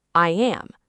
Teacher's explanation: Do you feel how your lips are stretched wide, almost like you are smiling? Now, when you drop your jaw to say the word am, your tongue drops down and accidentally creates a Y sound. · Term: invisible Y sound